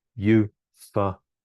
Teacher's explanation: So we can see that the first syllable there is stressed. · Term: main stress